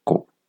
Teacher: cette voyelle libre est composée d'une voyelle fermée, que c'est le O fermé, co.